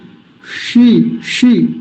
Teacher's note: मूर्धन्य शकार का अच्छे से उच्चारण करना आना चाहिए, मूर्धा से